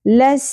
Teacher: سین پہ تشدید ہے، سین میں سیٹی اور شدت ہوگی. لس، س زبر زیادہ نہیں کھینچی جائے گی.